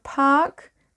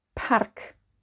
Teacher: The A in English shortens in Welsh to A. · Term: Short A